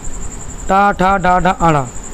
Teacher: देखिए का वर्ग बोला जाता है कंठ से, ता वर्ग बोला जाता है तालु से, चा वर्ग। टा वर्ग बोला जाता है मूर्धा से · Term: मूर्धन्य